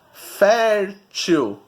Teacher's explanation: O fer é a sílaba tônica, é a penúltima.